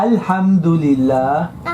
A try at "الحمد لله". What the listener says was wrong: अम नहीं है, अल्हम.